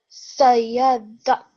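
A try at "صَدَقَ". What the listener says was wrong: don't rush through the dal, okay? Then the kaf has a fatha. Ka. Remember not to rush through, okay? Make sure that you press down on the dal. Make sure you spend enough time on it and then you move on to the gap, okay?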